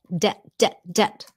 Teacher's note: You don't pronounce the B